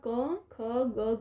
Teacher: ક, ખ, ગ, ઘ એનું ઉચ્ચાર સ્થાન કંઠમાંથી બોલાય છે અને એનો પ્રકાર કંઠ્ય છે અને એનો વર્ગ ક વર્ગ છે.